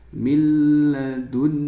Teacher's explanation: Kemudian ada nun sukun bertemu ha minadunhu nun sukun dibaca jelas berarti idhar ya nun sukun bertemu ha dan nun sukunnya ini dibaca dengan jelas dinamakan idhar halqi.